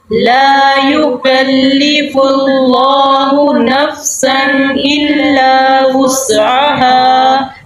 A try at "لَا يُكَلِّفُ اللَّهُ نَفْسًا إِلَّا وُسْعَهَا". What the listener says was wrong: वाव पे ضمة وسعها